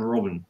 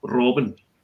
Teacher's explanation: if I go over into Scotland to the family there, I'm Robin, and it's a trill